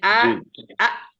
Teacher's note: হামজাটার position হচ্ছিল কণ্ঠনালীর একেবারে শুরু থেকে